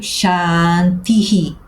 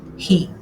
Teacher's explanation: Por isso, eu escrevo Shanti e agora um H com pontinho e eu leio Shantihi. Então, o H com pontinho representa o som Hi, ou seja, o som da vogal que vem antes do H, pronunciada com uma aspiração, quase como se eu estivesse a ler aquilo que em inglês seria o som do H em Hi.